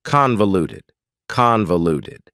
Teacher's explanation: That second syllable, again, has that schwa sound, that reduced vowel sound.